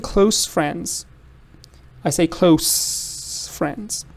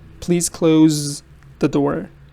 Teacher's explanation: As an adjective, it's a se. As a verb, it's a z.